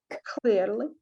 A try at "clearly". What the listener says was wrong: We're not going to add the Ukrainian h sound. All right. We're going to just add more air. Clearly. Clearly. And it's not l, it's l, right? Clearly.